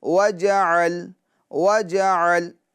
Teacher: عین کو اچھے طریقے سے ادا کرنا ہوگا تاکہ حمزہ کی طرح یہ معلوم نہ ہو